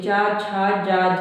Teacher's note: हम चा का जब उच्चारण कर रहे हैं तो जिह्वा जो है किसको छू रही है, तालु को छू रही, चा छा जा झा, तालु होता है ऊपर वाला, जहाँ जीभ जाके टच हो रही चा कहने से, उसी को क्या कहते हैं, तालु कहते हैं। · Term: तालव्य